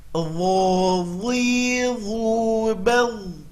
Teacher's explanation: Harus keluar lidahnya. Kalau tidak bunyinya menjadi zo, zi, zu. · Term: huruf dho